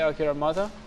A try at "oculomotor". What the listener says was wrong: Oculomotor. O-C-U-L-O motor. Oculomotor. Yeah. Yeah, without the R.